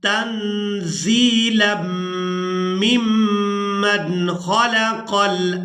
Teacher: अब यहाँ पर दो मीम मुशद्दद है तो दोनों पर ही गुन्ना किया जाएगा। गुन्ना करते हुए मीम की आवाज़ को कुछ देर नाक में रोक कर रखेंगे